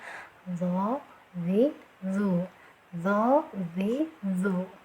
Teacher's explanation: ujung lidah bertemu dengan ujung dua gigi seri atas ya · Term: do